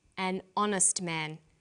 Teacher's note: The H is not pronounced, so honest sounds like it starts with a vowel.